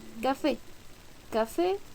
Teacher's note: todas estas palabras tienen acento en la última sílaba por eso son agudas